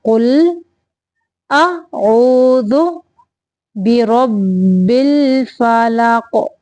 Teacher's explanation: یہاں پہ قاف کو قلقلہ کریں گے ساکن کرتے ہوئے۔